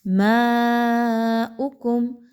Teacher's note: میم کے اوپر مد ہے، یاد رکھیے اس کو کھینچ کے پڑھنا ہے آپ نے، اور حمزہ کے اوپر پیش ہے تو اس کو بہت ہی کم مقدار میں اس کی حرکت کو رکھیے۔